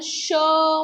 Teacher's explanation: आपल्या मुखावाटे असा वायू नाही का उसाचा बाहेर टाकल्यासारखा वाटते किंवा घर्षण निर्माण होते म्हणून याला उष्मे असं म्हटले जाते